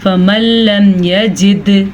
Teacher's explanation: दाल साकिन है तो इसलिए यहाँ पे कलकला होगा · अच्छा जी, ये नून साकिन है। नून साकिन के बाद लाम आया हुआ है तो यहाँ पे हम इदगाम बिला गुन्ना करेंगे, यानी यहाँ पे किसी किस्म का गुन्ना करना जायज़ नहीं है।